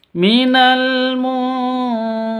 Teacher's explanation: terus munzirin nun mati bertemu dengan dalal dalal hurufnya ikhfa Hakiki cara bacanya samar didengungkan siap-siap ke huruf dalalnya